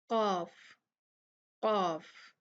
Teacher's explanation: नरम तालु जो है, इससे जो है निकलेगा आपका कॉफ